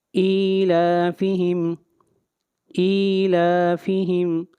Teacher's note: حمزہ کے نیچے کھڑی زیر ہے، اس کو 1 الف کے برابر لمبا کریں گے